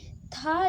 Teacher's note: थ जो है वो दंत वर्ग का व्यंजन है